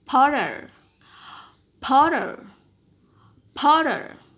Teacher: But in Americans, you are going to have p, o, flap, and syllabic.